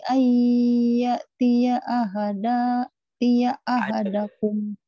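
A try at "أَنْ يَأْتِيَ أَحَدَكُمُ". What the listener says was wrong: Ayya, jangan tia, tia mah nanti tetangga saya namanya tia. Ayya tia.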